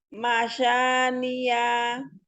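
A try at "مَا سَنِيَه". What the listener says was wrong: Sa, bedakan sa dengan sya. Itu masania atau masyania.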